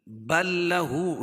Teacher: بل لام کا لام میں ادغام ہو رہا ہے